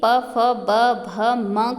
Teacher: प, फ, ब, भ, म को बोलने में केवल होठों का यूज होता है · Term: ओष्ठ्य